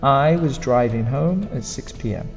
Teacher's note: we don't pronounce the was very strongly, it's quite soft. the driving gets the strong.